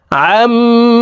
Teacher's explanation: মিমের উপরে তাসদিদ আছে এই কারণে এ আইন তাসদিদওয়ালা মিমের সাথে নাকের বাঁশি থেকে গুন্নাহ করে পড়বো